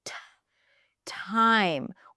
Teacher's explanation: a T in the beginning of a word is pronounced as t time with that little H right after